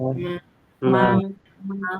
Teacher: Nah, ini bibir dirapatkan. Tapi bunyinya keluarnya dari hidung.